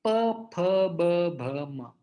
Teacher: और प वर्ग ये तो बिल्कुल आसान है, इसे ओष्ठ कहते हैं। हमारे दोनों ओठ बंद हो जाते हैं जब हम इस वर्ग का उच्चारण करते हैं